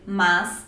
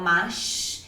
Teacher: Eu vou optar por utilizar o S de São Paulo, então eu vou dizer mas, ao invés daquele S com som de X do Rio de Janeiro, que é o mas.